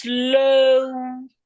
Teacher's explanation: Those words that Nigerians pronounce as o, we need to glide when say them.